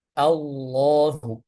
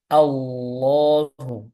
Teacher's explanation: dia baca dengan ujung lidahnya menempel pada gusi atas dengan menggembungkan punggung lidah Allahu menggembungkan digembungkan itu artinya punggung lidahnya ini dinaikkan ke atas